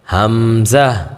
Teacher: হামজা বলার সময় শেষে একটু হা উচ্চারণ হবে